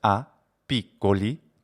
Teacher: the two words a piccoli together are pronounced as if there were two p's there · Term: radopiamento fonocintatico